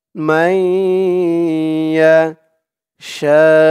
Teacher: নুন সাকিনের পরে ঈদগামে বা গুন্নার 4 হরফের এক হরফ তাসদিদ সহকারে ইয়া আসছে।